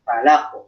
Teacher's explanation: Falaqu jangan falaqu tahan. Ingat qalqalah huruf qaf ya, itu lebih mengarah kepada bunyi fathah. Falaqu. Tapi ingat bukan fathah asli, mengarah kepada fathah.